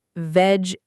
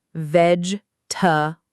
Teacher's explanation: It's not veg-e-ta-ble, it's veg-ta-ble. Almost like the middle syllable disappears.